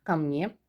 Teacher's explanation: Vurğu düşmür, ona görə a deyirik. A kimi tələffüz edirik.